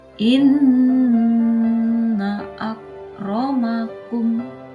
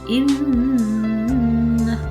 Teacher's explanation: Nun tasdid itu dibaca gunnah, baca dengan mendengung.